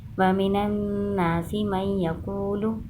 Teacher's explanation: نون شد پہ گنہ کریں گے اور یا شد پہ بھی گنہ کریں گے